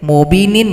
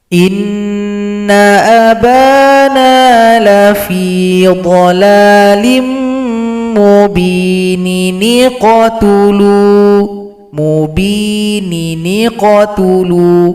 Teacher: Jadi kita gabung sehingganya huruf yang berada sebelum nun kecil pada ayat sebelumnya nun yang kasratain, mubinin menjadi mubini. Jadi nin diringkas menjadi ni. Kemudian hamzah wasal tidak dibaca lagi karena posisinya digantikan oleh jembatan kecil yang bernama nun wiqayah.